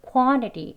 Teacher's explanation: 강세가 있는 부분만 quo 조금 입이 벌어지고요.